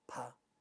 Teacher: this is no voice but plus aspiration so the point is some sounds like pa in english words become aspirated like papa at the initial position of the world